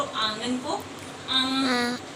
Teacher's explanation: अनुनासिक। ओके, इसे बोलते हुए नाक से और मुंह से दोनों से आवाज निकलती है।